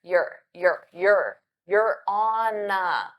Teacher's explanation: notice how on a sounds like one word because I use that N from on